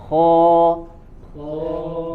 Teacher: dia tebal tapi tidak terlalu kuat ketebalannya, tidak sampai terangkat ke ujung lidahnya